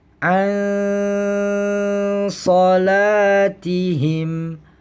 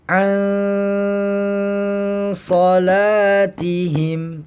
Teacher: Di sini karena adanya nun sukun bertemu huruf sod, maka huruf nun sukun di sini dibacanya adalah dengan membaca samar beserta dengung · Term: ikhfa